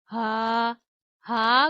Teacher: हा गले के आखिरी हिस्से से अदा किया जाता है।